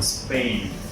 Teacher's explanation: You're still breathing, but it's not a really strong blast of air like in party. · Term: unaspirated P